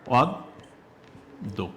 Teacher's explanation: আমরা কি করছি, লিখছি অদ্য কিন্তু উচ্চারণ করছি কি অদ্য, অর্থাৎ অ এর উচ্চারণটাকে আমরা কি করে দিচ্ছি, ওকার করে দিচ্ছি। তাহলে অ সমান আমরা এইটা কিন্তু আর থাকছে না, আর দেখা যাচ্ছে যে এটা তোমার স্বাভাবিক অ থাকছে না, ওটার উচ্চারণ হয়ে যাচ্ছে কার মতো, ও এর উচ্চারণ হয়ে যাচ্ছে ও এর মতো।